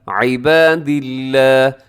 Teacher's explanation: لفظ اللہ کو اپنے باریک پڑھنا ہے